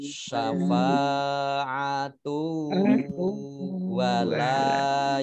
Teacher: Syafa'atu wa fathah alif mat tabi'i, kemudian tak marbutoh domah tanwin bertemu dengan wawu, bacaan idgham bi gunnah. Guna. Mendengung ya, mendengung di wawu.